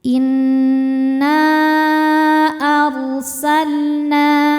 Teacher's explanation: Inna ar ro sukun dibaca secara ee tafkhim ya. Karena sebelum ro sukun ada harakat ada harakat fathah ya, maka rnya dibaca tebal.